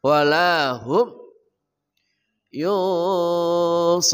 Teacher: Walahum ha dari pangkal kerongkongan, walahum yusarun. Nun mati bertemu shad namanya ikhfa haqiqi, samar dan dengung